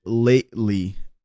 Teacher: he drops the T. So it is just like a glottal T sound.